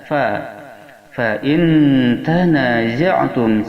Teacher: za makharijul hurufnya berada pada ujung lisan yang disentuhkan pada ujung gigi yang bawah, yang mana gigi yang atas juga didekatkan